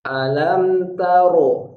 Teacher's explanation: Jangan alam tarakai, jangan alam tarokai. Ta tipis, ro tebal, kaf tipis. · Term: ro sempurna tebal